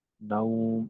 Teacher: উ এর মতো হবে, দীর্ঘ উ এর মতো হবে, কারণ ওয়াও যখন মাদ্দে লিন হিসেবে হয় ওই সময় ওয়াও এর উচ্চারণটা উ এর মতো হয়, দীর্ঘ উ। না, উ, ও না, নাউম এরকম।